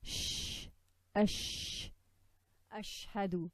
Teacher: Spreading or spraying air when pronouncing this letter. Only sheen has this quality. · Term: At-Tafashi